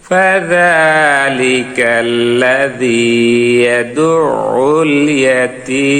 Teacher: তাই মাদ্দে আরজি 3 আলিফ টেনে মিমটা সাকিন হয়ে যাবে, জজম পড়তে হবে।